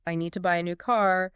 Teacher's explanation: For example, in the sentence, I need to buy a new car, the words need, buy, new, and car would typically receive more stress